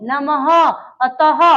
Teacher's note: तो इनको जब हम उच्चारण करते हैं विसर्ग का, तो ह की ध्वनि आती है